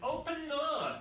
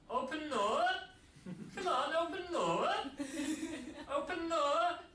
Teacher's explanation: So his intonation rised. Yeah? It became more polite.